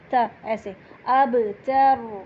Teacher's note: تا کو ہلکا سا نرمی سے ہمس کے ساتھ پڑھیں گے، بالکل کڑک تا نہیں بولنا، تا ایسے.